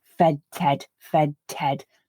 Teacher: i don't lift my tongue off the alveolar ridge and then place it back on again in between the voiced fed and then the unvoiced the voiceless ted what i do is to switch off my voicing after that